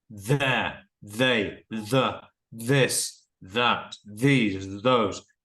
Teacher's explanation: you can feel the voice box vibrating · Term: hard voiced sound